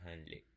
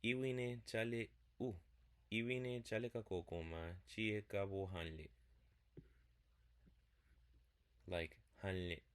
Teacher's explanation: the first person singular ergative suffix n don't show up too much. It tends to nasalize or just disappear.